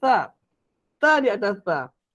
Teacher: Huruf sa lidah kita akan keluar sikit. Sama macam huruf zal.